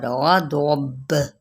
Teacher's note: औदब, ठीक है, बा पे कलकला औदब, ये जुम्बिश जो होती है ना, ठीक है, हिलाना, ठीक है। यहाँ पे बा साकिन करते हुए हम यहाँ पे कलकला करेंगे